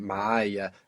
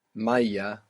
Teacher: we must be careful there to put the ayn in معايا, because without it, maya, we would have the word for water